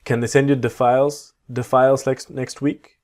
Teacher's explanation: when you have the word 'the' very quickly, it sounds like a duh.